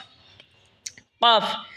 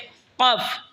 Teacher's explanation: জিহ্বার আগা থেকে একটু আগে বাড়িয়া তার বরাবর উপরে তালের সঙ্গে লাগে উচ্চারণ হবে কাফ।